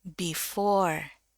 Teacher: turun dulu baru naik